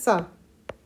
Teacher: स बोलते हो ना तो दांत से बोलना पड़ता है